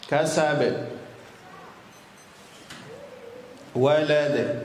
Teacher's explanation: memantulkan suara pada huruf yang sukun di makhrajnya sehingga terdengar pantulan yang kuat. Ini qalqalah.